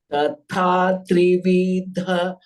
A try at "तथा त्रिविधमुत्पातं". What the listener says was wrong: Trividha, no, Trividha. We can't drag it. Trividham, if you have said, then it is Utpatam. Tatha Trividham Utpatam.